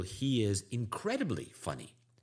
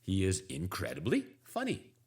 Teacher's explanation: when I say incredibly my voice naturally goes up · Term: intonation up